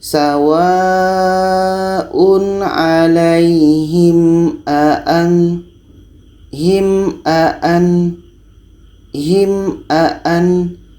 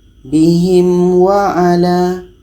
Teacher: Mim dengan a jelas dan tidak ada dengung. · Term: izhar syafawi